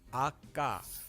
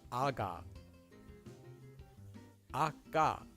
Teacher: you'll say ah, then take a quick pause, tensing your mouth, followed by ga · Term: double consonants